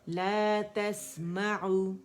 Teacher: عین ہے, یہاں دمہ دیں گے, گولائی مکمل رولنگ ہوگی لپس کی. ٹھیک ہے, لا تسمعو, او نہیں پڑھیں گے.